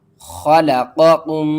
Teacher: اس قاف کو ہم نے موٹا کر کے پڑھنا ہے، خا کو حلق کے سب سے اوپر والے حصے سے ادا کرنا ہے اور اس میم کو دوسری میم کے ساتھ ملانا ہے۔